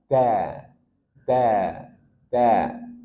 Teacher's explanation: ujung lidah ini permukaan atasnya bertemu dengan gusi gigi seri atas. Da da da. Dan dia tarkik tipis da bukan da. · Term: dal